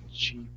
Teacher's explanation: when you make that CH sound, you really push. And you'll run out of air very quickly.